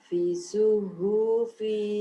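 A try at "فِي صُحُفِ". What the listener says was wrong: Fi-nya panjang. Fi suhufi.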